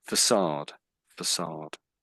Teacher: It's French sort of pronunciation and the C comes out as an S.